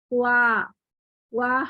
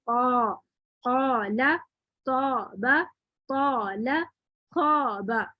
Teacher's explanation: الف جو ہے وہ باریک ہی پڑھا جا رہا ہے یعنی استفالی حالت میں. جب ہم قا بولتے ہیں تو الف تک پہنچتے تک بھی ہماری زبان اوپر ہی رہتی ہے بلندی پر. اس لیے ہم کہہ رہے ہیں کہ الف جو ہے ما قبل کے تابع ہوتا ہے کیونکہ آپ ایسے نہیں کر سکتے کہ آپ کیا کریں کہ قاف پڑھتے ہی فوراً الف کے لیے زبان واپس نیچے لے جائیں.